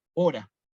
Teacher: nosotros la palabra hora, fíjense, la decimos a la H muda, hora, no decimos jora, ¿no?